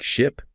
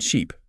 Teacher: ship uses a short I sound like in sit, and sheep uses a long E sound like in see. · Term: minimal pairs